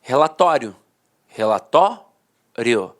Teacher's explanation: a penúltima sílaba a sílaba mais forte e a última de fato perdi a força Então os dicionários · A penúltima sílaba era a sílaba mais forte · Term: paroxítona terminada em ditongo